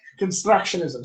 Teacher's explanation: that tapped R, constructionism, just always gets in your way